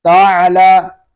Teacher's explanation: تا عین زبر تا، عین حلق کے درمیان والے حصے سے ادا ہوگا اور جب ہم عین کو ادا کریں گے تو ہمارا حلق تھوڑا سا گھومے گا